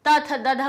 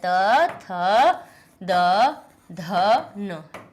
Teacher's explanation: ता था दाधा बोलने में सब में आप दांत से टकराएगी तभी ये ता था दाधा निकलेगे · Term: ता वर्ग